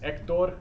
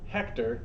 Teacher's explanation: notice it's not hector it's silent h